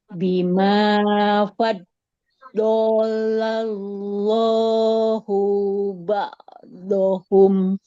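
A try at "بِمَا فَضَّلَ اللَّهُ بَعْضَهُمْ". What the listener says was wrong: Nah, hu-nya nggak panjang. Bima faddalallahu ba'dahum.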